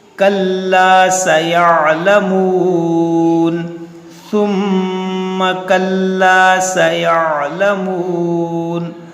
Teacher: یہ عین کو اکثر لوگ غائب کر دیتے ہیں، اس کو آپ کو ادا کرنا ہے